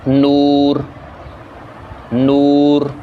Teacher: اور اسی طرح پیش ہے تو پیش کے اندر یو کی آواز آنی چاہیے، ایس ٹی یو، او کی آواز نہیں آنی چاہیے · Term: معروف آواز